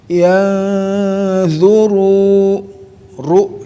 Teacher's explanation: ada takhirnya ru, ada getaran mengulang